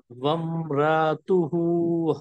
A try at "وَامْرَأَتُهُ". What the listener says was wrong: इसमें वम रा तुहु, हमजा की आवाज आपकी सही नहीं निकली, वम रा तुहु ठीक है।